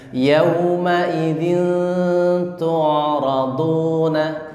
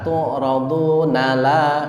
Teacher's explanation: perhatikan tu'raduna, na pendek langsung masuk ke la.